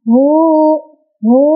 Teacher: Cara bacanya adalah hak domirnya dibaca 2 ketukan. Hu, ya, seperti itu. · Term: mad silah qasirah